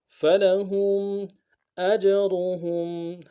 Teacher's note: فلهم اجرهم، حمزہ کو جیم کے ساتھ ملانا ہے، جیم حرف قلقلہ میں سے قلقلہ کریں گے اور را کو موٹا ادا کریں گے